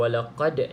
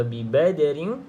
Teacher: kalau walaqad ni qalqalah kubra sebab berada di hujung perkataan. Okey, kalau bi badrin di tengah-tengah perkataan, qalqalah sughra. Bezanya adalah detakan tu lah, sama ada kuat ataupun sedikit perlahan.